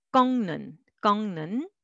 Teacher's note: 윽 sound will slightly change to an 응 sound to make it easy.